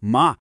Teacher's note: se a gente faz uma curvinha na voz que desce e sobe